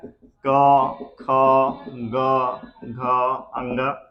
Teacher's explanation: सबसे पहला जो है हमारा कवर्ग, इसका उच्चारण स्थान कंठ से होता है